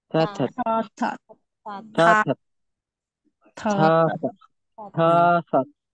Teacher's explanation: Ito naman po, na next na consonant, aspirated pa rin po yan. Pag nasa initial at middle, aspirated pa rin po. Sa final lang hindi.